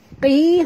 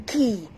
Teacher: Qi, huruf qaf tebal. Walaupun baris bawah, kena jaga makhrajnya qi ya, bukan ki.